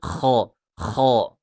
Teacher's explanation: Huruf kha, ya, tenggorokan atas diberikan ngorok seperti kha. Maaf, seperti orang mendengkur.